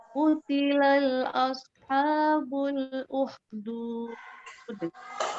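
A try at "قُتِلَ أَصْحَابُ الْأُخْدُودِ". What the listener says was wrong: Di kutila, tadi Bunda saya terdengar bacanya kutilan loh ya. sini tidak ada alif lam, jadi langsung saja kutila nah, uhdud. huruf kho-nya kurang keluar makhrajnya. Kutila ashabul ukhdud.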